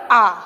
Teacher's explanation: किस स्वर के उच्चारण में मुख द्वार पूरा खुला होता है। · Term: विवृत स्वर